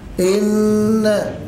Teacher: اوعى انك تزيد عن الغنه بمقدار حركتين فتصل بيها لالف